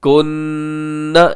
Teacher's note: نون ساکن کے بعد کاف ہے، یہاں پہ آپ اخفا کریں گے